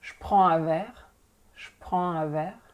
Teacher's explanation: it's not like je anymore, it's sh